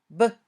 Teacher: When you say b, your vocal cords vibrate. It's a voiced sound. B. When you say both p and b, your mouth moves in the same way.